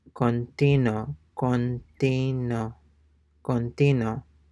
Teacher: notice that the U is not pronounced, or even the sound of the U is not discernible.